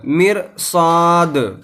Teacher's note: یہاں بھی دال کے اوپر قلقلہ کریں گے اور دال کو ساکن کر دیں گے جب دال کے اوپر ٹھہریں گے. تو ساکن کرنے کا مطلب یہ ہے کہ جو دال کے نیچے زیر ہے اس زیر کو نہیں پڑھیں گے بلکہ ساکن کر دیں گے، دال کو بغیر اعراب کے چھوڑ دیں گے پڑھ کر مرصاد اس طرح.